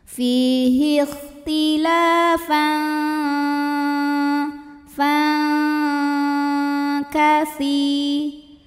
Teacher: Karena ada tanwin fathah yang menghadapi huruf kaf, maka tanwin fathahnya ini tidak bunyi n, melainkan bunyinya samar-samar. Siap-siap menuju makhraj huruf kaf disertai bunyi dengung. Dan dengungnya besar karena kaf ini makhrajnya jauh dari nun ya. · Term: ikhfa ab'ad